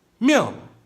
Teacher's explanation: fourth tone, it's abrupt, it's dropping really quick